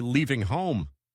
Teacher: Make the e in leaving a long e sound. And home rhymes with phone.